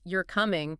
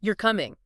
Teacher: A simple statement like you're coming becomes a question you're coming just by raising the pitch at the end